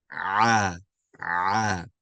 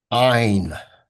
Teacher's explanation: This letter ain, it comes from the middle of our throat, okay? It comes from the middle of our throat.